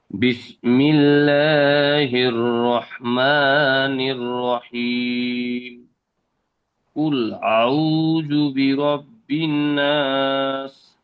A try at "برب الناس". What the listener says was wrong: বিরব্বিন গুণনা একটু করেন বেশিক্ষণ ধরে।